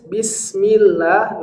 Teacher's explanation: Lam di sini, karena didahului oleh kasrah, maka lam dalam nama Allah dibaca dengan suara yang pelan. Bismillahi, sampai huruf hi, adalah huruf yang tipis.